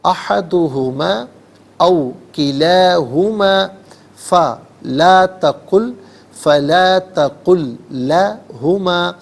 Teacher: ان دونوں مدوں کو جو کہ ایک ہی ہیں 3 سے 4 حرکات کی مقدار کھینچ کر پڑھنا چاہیے، اور زیادہ سے زیادہ میگزیمم اس کو 5 سے 6 حرکات کی مقدار کھینچ کر پڑھ سکتے ہیں. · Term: مد منفصل